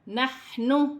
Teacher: ح حروف حلقی میں سے ہے، حلق سے ادا کیا جائے گا ، ساکن ہے، واو ساکن سے پہلے پیش ہے، واو مدہ